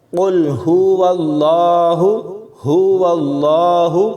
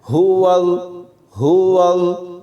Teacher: ہا کے اوپر پیش ہے تو اس کو بالکل بھی نہیں کھینچنا، سکون کے ساتھ پڑھنا ہے